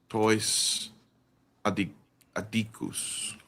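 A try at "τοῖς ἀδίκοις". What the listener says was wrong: Well, it's not ooze. Yep, ois.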